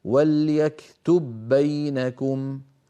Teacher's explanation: لاحظوا بأن الباء الأولى أدغمت في الثانية يعني دخلت فيها، فأطبقنا الشفتين على باء ساكنة غير مقلقلة وباعدناهما عن باء مفتوحة. والأصل في الإظهار أن نقول وليكتب بينكم، وهذا لا يفعله أحد من العرب أبدا. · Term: الإدغام